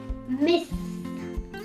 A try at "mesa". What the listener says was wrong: Mesa. No, ya pues salió la lengua. Salió la lengua. Si no hubiera salido, te la daba.